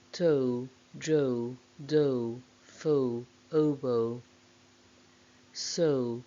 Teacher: The diphthong O starts at the same position of the schwa, and then there is a glide towards the closer vowel U with some lip rounding to produce the diphthong O. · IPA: əʊ